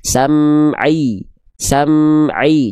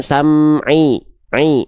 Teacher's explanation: Pastikan ainnya tidak masuk ke dalam rongga hidung kita.